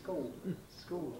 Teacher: Schools, without an L in it, you see, schools, schools, with this vocalisation, the L getting swallowed up into the O.